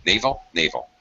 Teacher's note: in both of these cases, first syllable is stressed, they sound identical